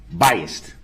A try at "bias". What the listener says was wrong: No, bias. B-I-A-S. There's no T at the end. Bias.